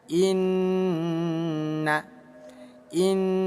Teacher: Nun yang bertasydid hukumnya ghunah musyaddadah. Tinggal kita dengungkan dua ketukan. Cara bacanya inna.